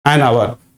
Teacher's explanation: So here H is basically silent in hour.